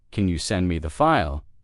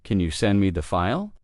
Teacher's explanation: use a rising tone at the end. "Can you send me the file?" It sounds more polite and more native-like.